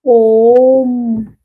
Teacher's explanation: देखिए ओम में भी ये ओम में भी देखिए ये 3 मात्राओं का समय लग रहा है ना, 3 मात्राओं का समय लग रहा है ओम का भी उच्चारण करते समय, तो ये प्लुत स्वर है